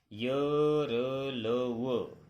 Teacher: अंत्यस्थ व्यंजन वे व्यंजन हैं जिनके उच्चारण में वायु को थोड़ा रोककर कम शक्ति के साथ छोड़ा जाता है।